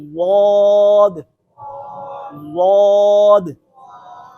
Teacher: जुबान की जो साइडें हैं वो ऊपर वाली दाढ़ों के साथ लगेंगी तो और मोटा होगा हर्फ